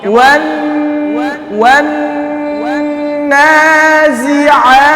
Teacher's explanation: আমি শুধু ওয়াতে ঠোঁট গোল করতেছি